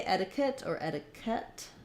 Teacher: stress so letter e is going to say the e sound my T is going to be flapped it'll sound more like a D · Normally QU would be a qu sound, a k and a w. In etiquette, it's just a k sound